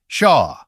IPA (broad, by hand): ʃa